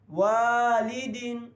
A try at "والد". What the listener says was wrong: لام کے جو ہے نا دال کے ساتھ ملانے کی کوشش نہیں کرنی، جھٹکا دینا، والد دوبارہ پڑھیں 3 دفعہ،